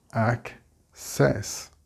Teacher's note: So we split the double C and we get access. The stress here is on the ac.